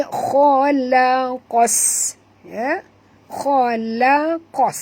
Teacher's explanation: Huruf qaf tebal, huruf kha pun tebal. Jangan baca khalaqas, bukan khalaqas, tapi khalaqas.